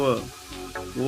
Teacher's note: दंतोष्ठ दांत से बोले जाने वाले वर्ण